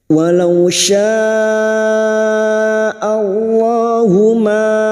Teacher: lam jalalah yang didahului fathah kita baca tafkim.